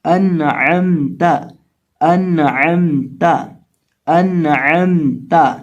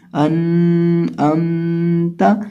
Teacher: یعنی نون یا میم کسی کے اوپر بھی ہم یہاں اخفا نہیں کریں گے، نہ نون کے اوپر گنہ کریں گے نہ ہی میم کے اوپر گنہ کریں گے، تو اس کو پڑھیں گے انعمت۔ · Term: اظہار